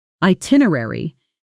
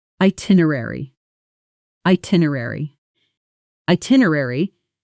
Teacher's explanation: Now, at natural speed, itinerary. Notice the middle syllables compress slightly. Er-ary almost blends into 2 quick beats rather than 3 separate ones.